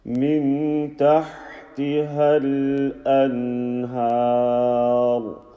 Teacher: You continue the sound until you're ready to say an. And this noon sakin sound, you hold it until you're ready to say the ha sound